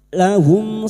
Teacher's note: Mim sukun dibaca jelas tanpa mendengung. Idhar syafawi.